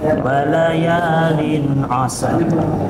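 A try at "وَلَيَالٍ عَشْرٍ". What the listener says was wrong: Pakai sya, ashr. Wala ya.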